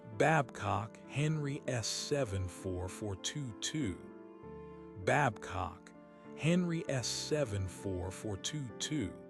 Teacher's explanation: The slight emphasis on the first syllable of the surname. That gentle rise and fall in the middle of the number. A subtle hypnotic variation within the monotone.